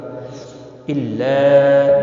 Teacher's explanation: الا مد منفصل ہے، تین الف کے برابر کھینچ کر پڑھیں گے۔